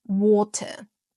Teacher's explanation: in British English, water is pronounced water. Water has a crisp little t sound. But in American English, the t transform into a duh sound, a d sound, a soft d sound, not a hard exposive duh sound.